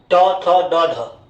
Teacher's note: ट वर्ग का उच्चारण स्थान होता है मूर्धा।